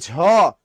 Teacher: যখন বলি জ, উচ্চারণে কম লাগে সময়, এটা হলো অল্প প্রাণ। যখন বলি ঝ, শ্বাস বেশি লাগে, ওটা মহাপ্রাণ